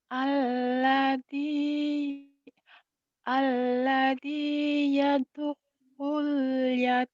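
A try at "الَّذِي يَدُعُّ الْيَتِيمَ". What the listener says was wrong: Kurang kurang kurang nempel ya du'ul gitu. Kurang neken. Alladzi yad'ul yad'ul yad'ul yad'ul yad'ul yatim.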